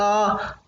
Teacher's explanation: आ को बोलने में हमारा मुख पूर्ण खुलता है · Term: विवृत स्वर